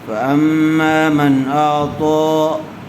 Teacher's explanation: من نون ساکن کے بعد حروف حلقی میں سے حمزہ آیا ہوا ہے، اس لیے بغیر گننے کے جلدی اظہار کر کے پڑھیں گے